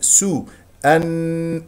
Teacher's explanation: السين مضمومه نضم الشفتين